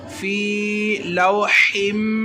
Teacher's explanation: हा और मीम की आवाज़ को जोड़ा और गुन्ना भी किया, वो इसलिए कि हा के नीचे दो ज़ेरें हैं, दो ज़ेरों को तनवीन कहते हैं।